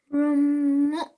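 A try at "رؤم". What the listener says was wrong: Well done. Excellent.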